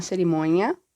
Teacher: a palatalização do fim, né, que era nia, e se torna nha